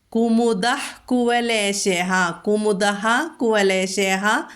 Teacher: വിസർഗം കഴിഞ്ഞിട്ട് കാ വന്നു, അതുകൊണ്ട് ഹ ഉച്ചരിക്കണം. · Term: ഹ വിസർഗം